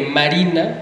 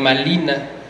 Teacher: los que hablaban náhuatl no tenían el sonido de la R, no existía en el náhuatl, y ellos lo usaban, lo convertían en L.